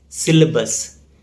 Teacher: There is no A sound after L